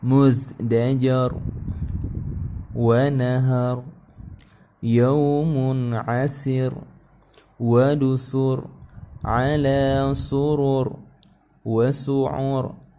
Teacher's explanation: semuanya yang berakhiran run, rin yang seperti ini, maka dia berubah menjadi ra-nya disukunkan